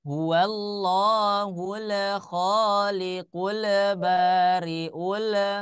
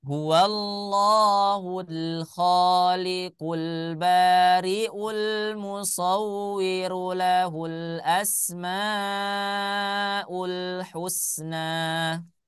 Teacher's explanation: Hati-hati lamnya, lam sukunnya jangan sampai qalqala, jangan sampai memantul.